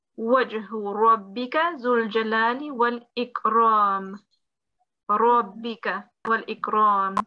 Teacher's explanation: the ra, which should be pronounced with a full mouth, a rounded mouth